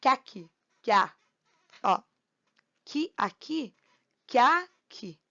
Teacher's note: Então, o A e o E vão contar como um bloco só de som